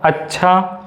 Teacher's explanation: तो इसमें चा तुम्हारा अल्प प्राण है, छा तुम्हारा महाप्राण है